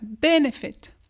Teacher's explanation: Accent tonique, première syllabe. Tu pousses la première syllabe.